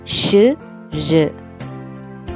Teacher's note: നേരത്തെ നമ്മൾ അഫ്രിക്കേറ്റ്സ് ച് ജ് പലേറ്റോ ആൽവിയോളാർ ആണെന്ന് പറഞ്ഞിരുന്നു. ഇത് പലേറ്റോ ആൽവിയോളാർ ആയി തന്നെ വരുന്ന ഫ്രിക്കേറ്റീവ്സ് ആണ് ഷ് ഴ്